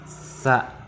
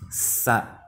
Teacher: Sa ini dibaca sa, ujung lidah dirapatkan dengan gigi atas. Ujung lidah ini dirapatkan dengan gigi yang bagian atas. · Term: huruf sa